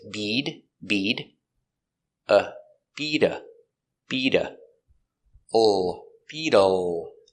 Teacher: We change the T to a D sound between vowels, so it's bead.